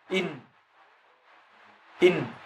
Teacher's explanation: ستجد مقدم اللسان يذهب إلى أعلى الحنك، إن إن أو مع خروج الغنة من الخيشوم. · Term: مخرج النون